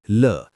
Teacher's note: पार्श्विक मध्य 2 अंगों के मिलने से वायु मार्ग अवरुद्ध, अगल बगल से वायु, जैसे ल। लुंठित जीभ बेलन की भांति लपेट खाती है, जैसे र।